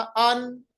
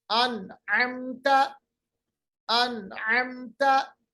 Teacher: आवाज को हमने नाक के बासे में नहीं लिया, खैशूम में नहीं लिया। अन अमता, अन अमता, तो नून की आवाज जाहिर हुई।